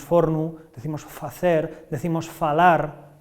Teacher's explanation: la conservación de la f inicial latina